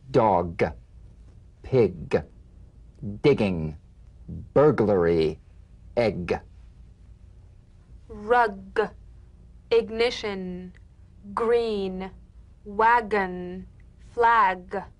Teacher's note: you'll feel a crisp tap and a voiced pulsation of the back of the tongue · the voiced tongue back plosive consonant G. Place the back of the tongue in gentle contact with the soft palate. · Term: drum beat G